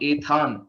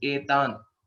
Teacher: There is no mahaprana. It is not ethan. Okay. It is just etan.